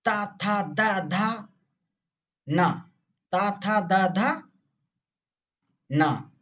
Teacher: तालु के जस्ट पीछे वाला भाग जो इसमें गड्ढा है, गड्ढा गड्ढा वाला भाग मूर्धा। ता वर्ग दांत में लड़ेगी जीभ, दांत में तुम्हारे आके जीभ लड़ेगी। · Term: दंत वर्ग